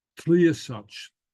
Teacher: the Gaelic T is pronounced against the teeth, not on the palate as in English, but the tongue goes forward, and then it's very easy to drop down to the L.